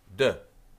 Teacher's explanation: And if you put your hand here and you go B, you can hear the vibration, b, and your lips are involved, b. D, you hear the vibration, d, and your tongue is touching your palate, d, or the back of your teeth